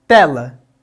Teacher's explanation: Quando pensamos nas paroxítonas, pensamos na penúltima sílaba, como é o caso de tela. Temos duas sílabas nessa palavra e a primeira, ou seja, a penúltima, é aquela que é a mais forte da palavra. Portanto, ela é uma paroxítona.